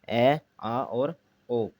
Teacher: हिंदी में अब यह कंठ से ऊपर कोमल तालु भाग से बोले जाने के कारण कोमल तालव्य स्वर है